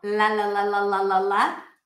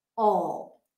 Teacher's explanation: that's the difference between the light L, la la la la la la la, and dark L, all.